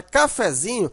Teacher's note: Mas na hora que você transforma essa palavra para cafezinho, você observa que o fé, ele não é tão fraco, mas ele também não é tão forte como o zin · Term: subtônica